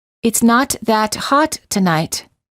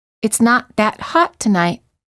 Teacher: The T in the second sentence is almost silent. All you hear is the interruption of the previous sound. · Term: held